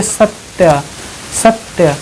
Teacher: आप एक स्लो मतलब एकदम धीरे धीरे बोलिए, सत्य। सत्य, जब सत्य बोलेंगे तो आपके मुंह से लास्ट में जो है उच्चारित होगा आ, और इधर बड़ा आ है तो ये हो जाएगा बड़ा आ, जिसको बोलते हैं दीर्घ आ।